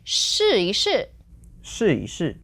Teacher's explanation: if I say that really quick it's gonna not sound like 一 with the second tone, it's gonna sound like the fifth tone.